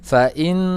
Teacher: nun yang bertasdid, dia adalah gunnah, jadi harus ditahan. Fa'in, kemudian huruf ain harus diperhatikan.